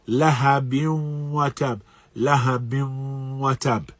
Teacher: the nasal cavity is a part of the articulation of noon sakina, having that gunna